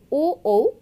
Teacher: যেসব ধ্বনির উচ্চারণ স্থান কণ্ঠ ও অষ্ঠ তাদের কণ্ঠস্থ ধ্বনি বলে